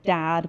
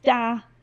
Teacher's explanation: a child drops the last sound off of many words. So dad becomes da, and son becomes sa, and dog becomes da. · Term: final consonant deletion